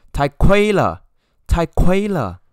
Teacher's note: when you want to express, you know, your attitude, your views that is so expensive, you should raise up your voice